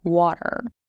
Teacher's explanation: pronounce R at the end of a word very strongly, like water